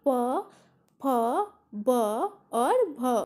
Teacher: ओस्ट से कौन से वर्ण का व्यंजन का उच्चारण होगा प वर्ग का